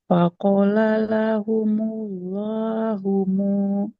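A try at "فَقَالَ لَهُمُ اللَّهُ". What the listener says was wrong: Faqala, qafnya fathah ketemu alif, harus panjang.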